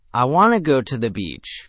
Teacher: Notice how want to compresses into a quick wanna to the, shrinks into a fast ta the, and the real emphasis lands on go and beach. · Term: stress-timed version